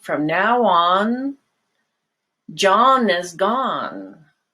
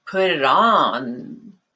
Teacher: final N, your tongue should always be touching the roof of your mouth, and very often it's linked to a vowel coming after